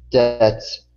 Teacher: the B in the word debts is silent, so we don't say debits, it's debts